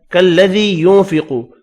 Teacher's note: یا مدہ ہے, ذی ایک الف کی مقدار میں کھینچ کر پڑھیں گے